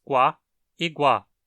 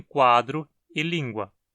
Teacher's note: duas consoantes labializadas, as oclusivas velares labializadas qua e gua, como em quadro e língua. Fonemicamente a gente interpreta isso como uma sequência de dois sons, mas na realidade a gente não pronuncia nenhum som de U propriamente dito ali.